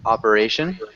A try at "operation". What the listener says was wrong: oh operation I read it like orentation